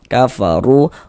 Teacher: Maka ini huruf ro kita baca tabkhim ya. Kita baca tebal sehingga dengan menaikkan pangkal lidah kita ketika kita mengucapkannya. Kafaru ru dibaca panjang.